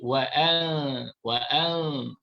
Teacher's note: Cara bacaan ikhfa hakiki, nun dibaca secara ikhfa, kemudian didengungkan dua harakat.